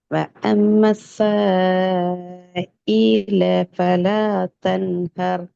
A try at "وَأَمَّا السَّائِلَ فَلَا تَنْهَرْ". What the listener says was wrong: இதுல இந்த சேவை நீட்டுறது போதாது, 3 செகண்ட் நீட்டான் வேணா. ஈல ரெண்டு போக இல்லாது, லாம நீட்ட இல்லாது.